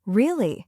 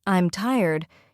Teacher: when asking a question like, Really? your voice rises at the end. But for a statement like, I'm tired, your voice falls.